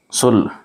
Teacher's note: لام پر جزم ہے اس لیے اس کو پچھلے والے حرف سے ملا کر پڑھیں گے